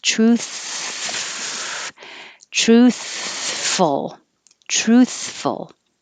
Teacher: keep your airflow going as you move your position with your teeth on your bottom lip for the f